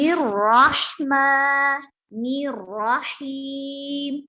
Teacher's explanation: الرحمن اور الرحیم کی ہا حلق کے درمیانی حصہ سے نکلے گی